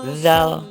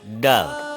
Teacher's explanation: Kalau zal itu ada nafas yang keluar, kalau dal itu tersendat. Da, da, za, za, da.